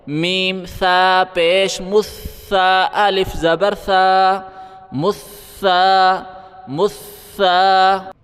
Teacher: سا کے اوپر زبان باہر نکال کے پڑھیں